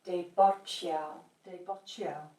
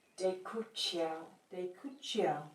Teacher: the T turns into a TCH sound in the middle of the word